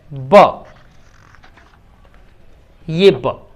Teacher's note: ब जो वर्ण है इसकी क्वालिटी ये है कि ये बाइलेबियल भी है और ये अल्प प्राण ध्वनि है, लेकिन ये सघोष है